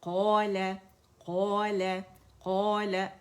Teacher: ٹھیک ہے، اذا تتلى عليه آیاتنا قال قال اگین الف مدہ بن رہے. قاف کی آواز پہلے درجے کی تفخیم ہوگی اور موٹا پڑ جائے.